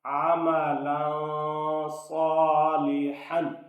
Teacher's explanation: تنوین کے بعد چونکہ صاد ہے اس لیے یہاں اخفا ہوگا